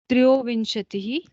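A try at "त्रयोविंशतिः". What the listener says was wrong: No trio. Trayo. Tra is full there. There is no half. See, the bar completes. So trayo vimshatihi. You go correctly nasal for the bindu. Vinchatihi like that.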